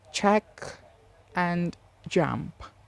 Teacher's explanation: with the tongue in the mouth but in contrast to stop the block air stream is suddenly not released but is slowly released and causes audible friction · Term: affricatives